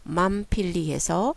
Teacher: 그다음에 두 가지 룰, 즉 위에 나와 있는 두 가지 룰이 다 적용이 된다면, 즉 14A와 B의 룰이 다 적용이 된다면 원래 망이었던 것이 필리에서처럼 필리와 같은 벌브 룻과 합쳐지게 되면 맘필리해서 무와 푸가 조음점이 같아지는 경향이 되어서 워낙에 응이었던 것이 무로 바뀌게 되고요. 두 입술 소리로 바뀌게 되고, 그리고 나서 다시 두 번째 14B의 룰에 따르면 voiceless consonant, 즉 무성 자음은 베이스의 무성 자음은 탈락이 된다라고 했었는데, 여기서 베이스에 있던 무성 자음, 즉 푸는 무성음이죠.